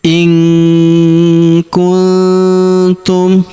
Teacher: nun sukunnya melebur ke huruf ku. Kita baca dengung dan samar. Dengungnya kita tahan dua sampai 3 harakat ya.